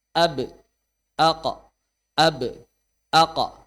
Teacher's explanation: pendapat pertama Qalqalah selalu mendekat ke arah fathah mirip fathah